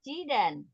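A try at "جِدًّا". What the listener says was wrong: Jiddan. Dalnya ada tasdidnya jiddan.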